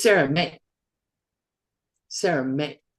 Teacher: But you see, this ends with the da suffix. So there's no like yi sound at the end. Like usually if there's a y here at the end, you would like stretch it out a little bit.